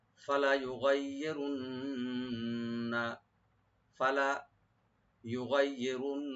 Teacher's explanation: ওয়ালা আমুরান্নাহুম ফালা ইউগাইয়িরুন্না, ফালা ইউগাইয়িরুন্না, এখানে কোনো সব অক্ষরে টান হবে না, শুধু রাটাকে ডিপ করবেন, আর নুন মুসাদ্দাদ ওয়াজিব গুন্না।